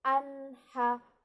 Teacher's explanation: Tidak ada dengungnya, tidak ada ikhfa samar-samarnya, bacanya jelas. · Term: izhar halki